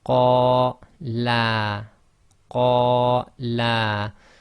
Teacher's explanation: So if you notice, the la was longer than the first la.